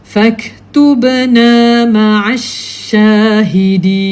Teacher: Kita menggunakan shin tu bahagian pertengahan lidah. Jadi kontrolnya mulut kita tu dia tak terbuka sangat lebih. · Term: huruf shin